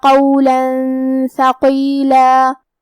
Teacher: کلمت ثقیلہ پہ رکیں گے تو ہم اس کلمہ پہ مد الف سے رکیں گے